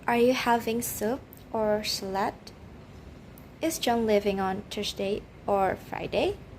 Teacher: the intonation that rises and then Falls